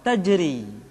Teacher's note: Ra dibaca tipis ketika dia berharakat kasrah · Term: ra yang dibaca tipis